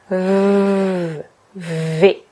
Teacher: Le V, c'est la version sonore du F. Donc, on pose nos dents supérieures sur notre lèvre inférieure. On n'appuie pas trop, sinon le son ne sortira jamais.